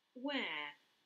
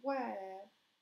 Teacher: No pronuncian la R, dicen where.